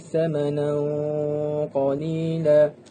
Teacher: Di sini terdapat tanwin bertemu dengan qaf. Ia merupakan hukum tajwid ikhfa' hakiki. Ia dibaca dengan kadar 2 harakat